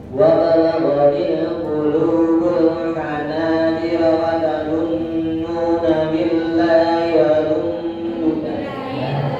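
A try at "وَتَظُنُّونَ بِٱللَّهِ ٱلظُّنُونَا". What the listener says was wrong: Billahi langsung tasbihnya kok hati-hati. Kenapa ditambahi wa barang? Billahi dhununa.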